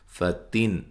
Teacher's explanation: نون تنوین کا اظہار ہے، غنہ نہیں کریں گے